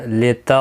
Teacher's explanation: پہلا تا باریک ہے، دوسرا تا موٹا ہے، اور اس پر قلقلہ بھی ہوگا کیونکہ ساکن ہے